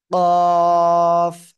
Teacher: জিহ্বার গোড়া তার বরাবর উপরে তালুর সাথে লাগিয়ে মোটা আওয়াজে চার আলিফটা নিয়ে উচ্চারণ করতে হবে